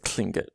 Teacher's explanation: All those should be pronounced kind of clingit. So the L is an aspirated L. · So you have an aspirated L there, and then you have a T at the beginning that's sort of operating almost like how a K sounds in English, but a little bit softer, for lack of a better word.